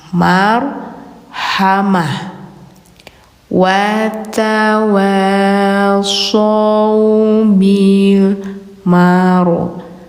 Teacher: Kalau bertemu ta bulat gini marbutah namanya. Terus posisinya mati atau di akhir kalimat maka suaranya berubah menjadi ha.